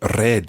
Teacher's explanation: we also roll our R's, so we say red as opposed to red or anything else.